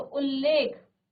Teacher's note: त के बाद ल आए तो त का फिर वही हलंत के साथ ल हो जाता है